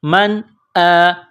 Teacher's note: یہاں نون ساکن کے بعد حمزہ ہے، حروف حلقی ہے تو یہاں غنہ نہیں کریں گے